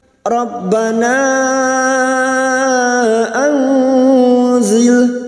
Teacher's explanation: Rabbana anzil, nun sukun bertemu zain, ikfa hakiki, kita samarkan bunyi nun sukun dan mendengung selama 3 harokat